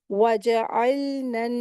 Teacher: नून को नून में मिलाकर पढ़ देंगे, ठीक है? यहाँ पर मर्ज करके मिलाकर पढ़ेंगे और नून मुशद्दद गुन्ना करके पढ़ेंगे।